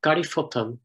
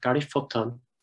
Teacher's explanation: the emphasis is very much on the second syllable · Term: stress shift